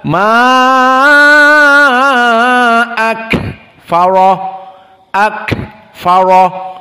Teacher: kaf jika disukunkan dia hams seperti ha.